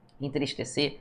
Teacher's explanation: o M ou o N, ele nasaliza uma vogal anterior não produzindo som